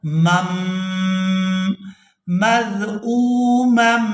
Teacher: میم کو میم مشدد کے ساتھ ملائیں گے اور غنہ کے ساتھ ادائیگی کریں گے